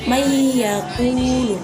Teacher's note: Contohnya, mayyaqulu, nun mati bertemu dengan iya, didengungkan dan dimasukkan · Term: idgham bi gunnah